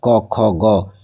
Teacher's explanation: যখন জিহবালীয় অর্থাৎ ক, খ, গ এগুলো উচ্চারণ করব তখন জীভের পিছনের অংশ নড়াচড়া করবে।